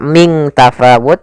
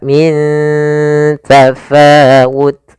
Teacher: nunnya disamarkan ke huruf ta, bukan dibaca ming tafawut, tapi dia min, ya, ikhfa-nya langsung ke ta, min tafawut.